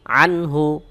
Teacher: নুন সাকিনের পরে হা ইজহারের হরফ স্পষ্ট যেভাবে আছে গুন্না ছাড়া সেভাবেই পড়তে হবে